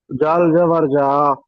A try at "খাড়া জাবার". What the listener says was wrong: জাল জাবার নয়, খাড়া জাবার বলতে হবে। শুধু জাবার কিরকম বলেন তো? এই যে এটা হলো শুধু, এটা হলো শুধু জাবার, এটা হলো শুধু জের, এটা হলো শুধু পেশ। আর এগুলো হলো, এটা হলো খাড়া